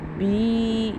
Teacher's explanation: کیونکہ زیر ہے اور آگے یا ساکن ہے تو ایک الف کے برابر لمبا ہوگا